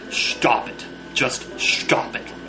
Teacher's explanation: And he pronounces the S in stop as an SH sound. It sounds a lot more emphatic that way.